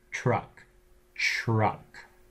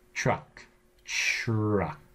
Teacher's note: your tongue hits further back than it normally would on the alvea ridge to the pallet truck truck that by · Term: palatalized